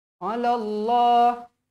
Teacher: lafzul jalalah dibaca tebal dengan kadar dua harakat sebab huruf lam ni berbaris atas